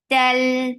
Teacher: ta is very sharp, no flow of sound